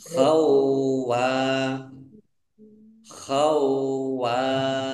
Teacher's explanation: Khawanan asima, wawunya ada tasdidnya, dibaca double.